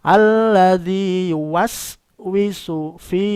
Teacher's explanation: Kalau sin bacanya ngeses, meringis.